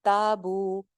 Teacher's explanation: ता और बू दोनों एक जितनी लेंथ है, ता अलिफ मद्दा बू वाव मद्दा।